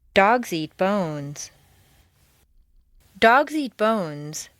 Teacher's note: note that the intonation stays on the nouns